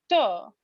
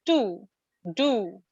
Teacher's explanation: where is your tongue it is touching the alveolar ridge